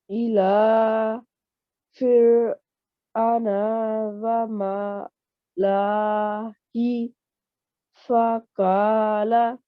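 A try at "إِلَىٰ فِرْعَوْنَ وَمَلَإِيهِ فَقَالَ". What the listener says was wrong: Okay, so we're not going to, sorry, the red highlighted alif here after the lam. We're not going to elongate there. Short 1 second lam, la.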